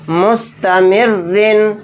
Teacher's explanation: रा दो ज़ेर रिन, मुस्तमिर्रिन, राय मुशद्ददा के नीचे दो ज़ेर हैं तो रा को यहाँ पर बारीक पढ़ेंगे